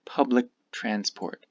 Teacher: Public transport, this k disappears.